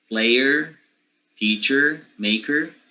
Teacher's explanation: all those er will be with schwa